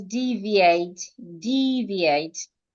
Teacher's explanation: You're stressing the first syllable.